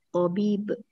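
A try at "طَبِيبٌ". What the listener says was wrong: Tabibun. Harakat akhirnya dibaca ya, harakat.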